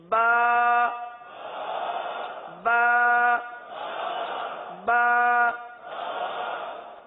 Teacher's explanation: یہ جو ہم حرف ادا کر رہے ہیں ایک الف تک کھینچ کے پڑھ رہے ہیں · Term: حرف کی مقدار